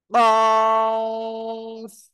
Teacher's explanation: জিহ্বার গোড়া, তারপর আবার উপরে তালুর সাথে লাগাবেন, লাগিয়ে উচ্চারণ করবেন। · সবাই আমার সাথে বলেন, জিহ্বার গোড়া তারপর আবার উপরে তালুর সাথে লাগিয়ে দুই নোক্তাওয়ালা কফ। মোটা আওয়াজে পড়তে হবে, 4 আলিফ টানতে হবে।